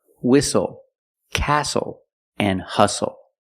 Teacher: The T is silent with the spelling pattern S-T-L-E. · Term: silent T